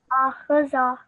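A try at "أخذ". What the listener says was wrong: Just the kha again is a thick and round letter, so make sure that that is thicker when you recite it. So it should be akhadha, akhadha.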